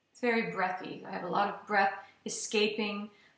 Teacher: in the breathy sound, I feel like my air is escaping very quickly. It's actually a harder sound to keep going.